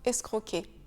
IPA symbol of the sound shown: k